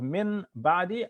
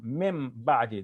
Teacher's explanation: That when the noon of tanween or any noon, it's not noon of tanween this time, it's the noon, the regular noon, min ba'di, it's followed by a ba. So we assimilate the noon sound into the ba.